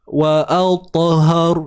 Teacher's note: Ingat ta tebal dan lantun.